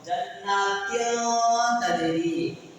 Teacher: தன்வீன மூக்கால மறைச்சு ஓதணும். குன்னா செஞ்சு ஓதணும்.